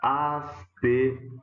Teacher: Ela é uma palavra paroxítona, isso quer dizer a sílaba forte é a penúltima, com um ditongo aberto, um O. Esta é uma palavra que, depois da reforma, deixou de ter acento pela mesma razão, né?